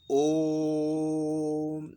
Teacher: जिस स्वर को बोलने में लघु स्वर से 3 गुना समय लगे और दीर्घ स्वर से 2 गुना समय लगे तो वो प्लुत स्वर बन जाता है।